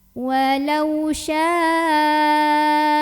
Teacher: Mak topinya adalah Alif sebelumnya Fatihah hamzahnya yang abada kata syaa maka cara membacanya dipanjangkan boleh 4 boleh juga lima harokat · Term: mad wajib muttasil